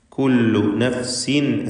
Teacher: കുല്ലു നഫ്സിൻ ബിമാ തസ്അ, കുല്ലു നഫ്സിൻ എന്നതിലെ തൻവീൻ ഇഖ്ലാബ് ചെയ്ത് മീമാക്കി മാറ്റി മണിക്കണം